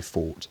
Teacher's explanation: A couple of people asked about non-rhoticity, which is the tendency of people in certain cities in the US to drop r sounds when they occur at the end of a syllable before a consonant